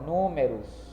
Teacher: Então ela vai ficar aqui no lado das proparoxítonas. Porque números está acentuada na antepenúltima sílaba.